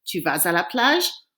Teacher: I have to pronounce that S because A is a vowel.